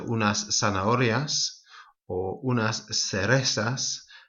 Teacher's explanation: Might also be worth mentioning at this point that Z in Latin America and in the south of Spain is pronounced more as a S.